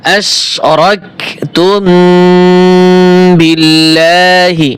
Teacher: এখানে মিম সাকিনে গুণ হবে কারণ মিম সেকেন্ডের পরে বা এবং মিম ছাড়া কোনো হরফে গুণ হয় না